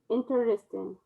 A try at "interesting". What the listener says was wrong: Well, they want you to say it without that syllable in the middle.